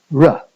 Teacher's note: And the sound you get from moving your tongue like that is r. So r is a movement of your tongue towards the alveolar ridge and then down away from the alveolar ridge again. Okay, so again, it's not a fricative, it's not a stop, it's not a nasal. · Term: approximant semi-vowel